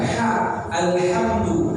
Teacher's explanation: letak huruf ha itu ada di tengah tenggorokan